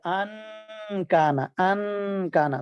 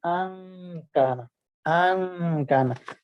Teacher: اور اس کا طریقہ کیا ہے کہ زبان کے کنارے کو دانتوں کے ساتھ ہلکا سا لگائیں اور نون کی آواز کو ناک میں چھپائیں گننا کرتے ہوئے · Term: اخفاء